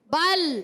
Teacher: لام ساکن ہے، ہلانا نہیں ہے، لوٹ کر آواز نہیں ہے